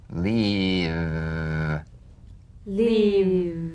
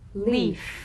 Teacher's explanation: If you don't have enough vibration in your V's, they'll end up sounding like the F because they're exactly the same. One has vocal cord vibration, the other is unvoiced.